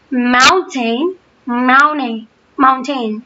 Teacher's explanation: Americans tend to either drop their T completely or replace them with a D.